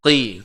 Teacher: Dia baris bawah dia tebal juga, cuma dia berkurang sedikit.